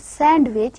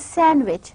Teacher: the da sound it is elided it is omitted